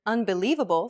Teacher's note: do you notice how the li is accentuated that's because it's pronounced longer and louder than any other syllable and this is what we refer to as stress stress is